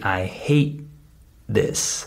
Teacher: the T at the end is muted · is muted I don't say I hate I say I hate I just stop the T sound without the air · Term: muted consonants